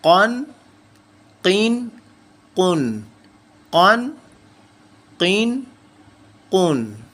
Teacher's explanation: قاف کا مخرج میں پھر سے ریپیٹ کرتا چلوں، جو ہماری زبان کا سب سے آخری حصہ ہے، جو زبان کی جڑ ہے، وہ حصہ جو ہے اپر پیرٹ کے ساتھ ٹچ کرتا ہے تو قاف کی آواز جو ہے وہ پروڈیوس ہوتی ہے. دو تنوین قاف دو زبر کے ساتھ، قاف دو زبر، قاف الف دو زبر، قن، قاف دو زیر، قین.